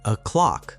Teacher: When you say o'clock, the stress is on the second syllable.